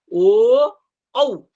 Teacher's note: कंठ में भी जोर पड़ता है और ओष्ठ में भी स्पर्श होता है। इसलिए कंठष् स्थान कहा गया है। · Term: कंठोष्ठ